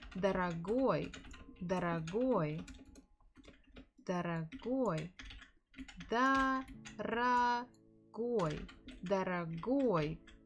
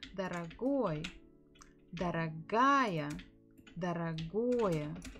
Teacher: The stress falls on the final syllable.